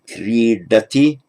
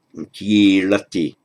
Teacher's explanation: The kr becomes a k in Pali, and the d becomes a l because it's got a vowel on each side.